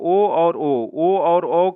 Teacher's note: इसका जो होता है कंठोत्थय से होता है, जो कि कंठ द्वारा जीभ और ओठों के कुछ स्पर्श से इसका उच्चारण होता है।